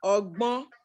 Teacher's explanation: Kò tẹ́ ń ṣe nasal consonant ní ẹ̀, it's just nasal vowel ni.